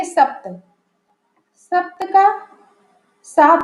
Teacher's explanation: सप्त का सात बन गया है, यहाँ पे प का लोप हो गया है